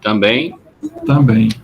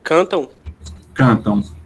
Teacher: Também e cantam, a gente não diz cantam, também. O que a gente produz é esse M como se fosse uma semivogal. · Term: ditongos decrescentes nasais